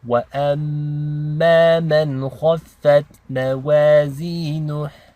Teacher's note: kha is a heavy letter. Okay, so this is nice and thick.